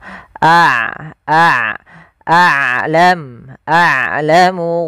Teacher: Sedangkan syiddah adalah su ee suaranya tertahan. Nah, ain tidak terlalu ditahan dan tidak terlalu dialirkan. · A ain sifatnya sifat bainiah yaitu di antara sifat rakhawah dan sifat syiddah.